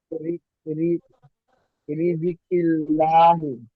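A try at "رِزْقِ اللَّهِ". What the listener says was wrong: রিজকিল্লাহি, রিজি কেন বলতেছেন, রিজ এখানে উপরে জজম তো, এই যে।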